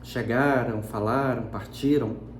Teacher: vai haver ocorrência de glide na fala, porque vai aparecer um U na sonoridade quando você diz que não aparece na escrita.